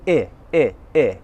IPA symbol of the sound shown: ɪ